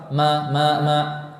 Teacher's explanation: Huruf mim tidak namun disertai dengan khayshum, disertai dengan udara yang mengalir dari rongga hidung. Khayshum itu artinya rongga hidung.